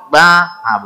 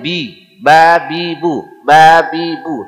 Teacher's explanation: tidak ada masuk rongga hidung